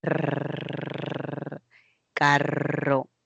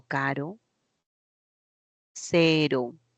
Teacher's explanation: hay varios contactos varios choques no toques de la punta de la lengua en los alveolos se llama vibrante múltiple